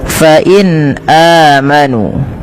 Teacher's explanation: ini suara nunnya dibaca dengan jelas karena ia ada bacaan yang kita namakan dengan izhar halqi. Maka harus dibaca dengan jelas.